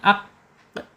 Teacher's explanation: pangkal lidah menyentuh ee atasnya ya langit-langit yang mempunyai anak lidah